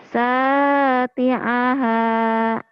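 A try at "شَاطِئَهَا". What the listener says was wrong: Shinnya kurang. Syati'ah.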